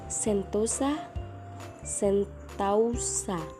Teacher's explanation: proses perubahan vokal tunggal menjadi vokal rangkap secara berurutan perubahan vokal tunggal ke vokal rangkap masih diucapkan dalam satu Puncak